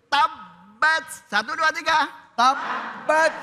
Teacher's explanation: Untuk mengeluarkan tanda tasdidnya ditahan.